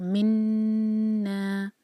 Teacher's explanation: 2 seconds نون کی آواز کو ناک میں رکھیں گے اور پھر آگے بڑھیں گے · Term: غنہ